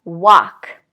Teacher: again no L pronounced at all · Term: silent L